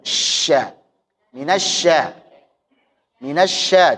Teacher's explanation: Jadi syin itu punya sifat tafasiyi. Jangan kamu lupakan itu intisyar atau menyebarnya suara dan udara itu.